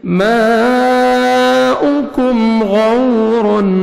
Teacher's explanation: واو لین ہے، واو پہ لپس کو راؤنڈ میں لے کے جانا ہے، نرمی سے ادا کرنا ہے، غین کو موٹا کر کے پڑھنا ہے.